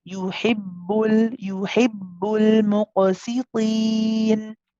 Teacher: The sound actually does stop. You say yuhib, and then you say boo. The sound kind of stops in the middle. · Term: shidda quality